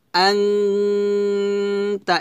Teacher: নাকে ভিতর থেকে গুন্নাটা নিয়ে আসবো, ওয়ান আলিফ পরিমাণ টেনে পড়ব